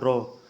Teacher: रॉ लुंठित, जिसके उच्चारण में जीभ तालू से लुढ़क कर स्पर्श करे। अब आप खुद रॉ बोल के देखिए, रॉ आपकी जीभ में ऊपर जाएगी और कंपन होगा दोस्तों, रॉ रॉ वहाँ पर 3-4 बार जीभ हिलेगी आपकी एकदम, यानी लुढ़केगी दोस्तों वहाँ पर।